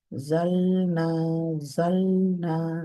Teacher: জাল, তারপরে নুনে যাবেন, জালনা, জালনা, লাম সামনে, নুন তার চেয়ে একটু ভেতরে।